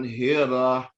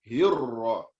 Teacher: Harus ada bunyi sabdu tu untuk menebalkan huruf ra.